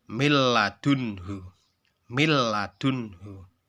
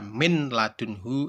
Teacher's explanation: Idgham bila gunnah memiliki 2 huruf, yaitu lam dan ro. Idgham bila gunnah cara bacanya yaitu tanpa dengung